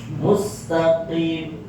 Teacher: ketika pengucapan huruf qaf harus berada tepat pada pangkal lidah